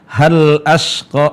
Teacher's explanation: lam sukun bertemu dengan alif, jelas ya.